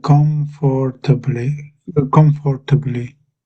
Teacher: So when you're saying it, I can hear all of the different syllables one after the other, and there's a fraction of a gap between all of them